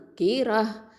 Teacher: அனித் தவ் கீரா, அதாவது கேஃப் கெசராக்கி ரா ஃபத்ஹா ரா, இது ஹெவியாக ஓதணும். கேஃப் வந்து அக்கசல் லிசான் கீழ் நாவை எழுத்து.